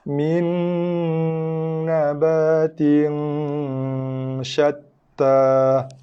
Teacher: Hujung lidah tekan pada langit depan ataupun gusi atas. Tekan berserta dengan dengung, lepaskan dengan baris dia. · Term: Dengung idgham